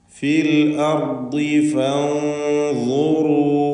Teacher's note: ഫൻദുറൂ സാക്കിനത്തായ നൂനിനെ ഇഖ്ഫാ ഹഖീഖി നൽകി മറച്ച് മണിക്കണം. മണിക്കലിൽ തഫ്ഖീം വേണം. തടിപ്പിച്ചുകൊണ്ടുള്ള സ്വരഭാരത്തോടെയുള്ള തഫ്ഖീമോട് കൂടിയുള്ള മണിക്കൽ അല്ലെങ്കിൽ ഇഖ്ഫാ, അതാണ് ഇവിടെ കാരണം.